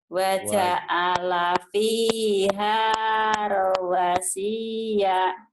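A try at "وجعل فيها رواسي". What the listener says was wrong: Iya bener, tapi panjang pendeknya salah. Waja'ala fiha rawasiya.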